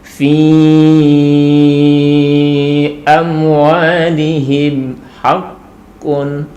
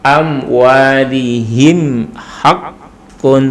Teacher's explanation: untuk mim ketika di situ dibaca dengan jelas maka harus tertutup. Karena memang makharijul hurufnya mim itu adalah di bibir. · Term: idhar syafawi